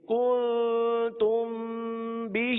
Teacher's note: تیسرا کلمہ کاف نون پیش کن، تا میم پیش تم، کنتم، با زیر بی، ہا کھڑا زیر ہی، بھی، کنتم بھی. اب کن پہ اخفا کا قاعدہ ہوگا اور تم پہ اخفاء شفوی کا قاعدہ ہوگا، دونوں میں گننا کر کے پڑھیں گے.